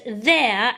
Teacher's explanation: My tongue is poking out at the beginning for the their sound.